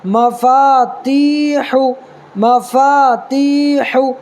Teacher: تی کو ایک الف برابر کھینچنا ہے، اس لیے کہ یا ساکن سے پہلے تا کے نیچے زیر ہے، تو یا ساکن سے پہلے زیر ہو تو یا مدہ ہوگا، تو یا مدہ کو ایک الف برابر کھینچ کر کے پڑھنا ہے.